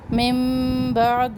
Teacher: من بعد اقلاب نون ساکن کے بعد با آ جائے تو نون کی آواز میم میں بدل جاتی ہے